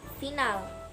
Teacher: Ciri-cirinya mati, oral, labiodental, frikatif.